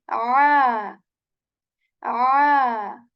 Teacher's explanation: Ain is articulated from the portion of throat which is the middle one. Okay, the middle portion of throat, and we say ah, ah.